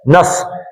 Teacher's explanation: نس سین پتلا، سیٹی کی آواز آئے